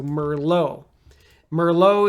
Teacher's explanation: don't say the T sound because again I think it's French so no t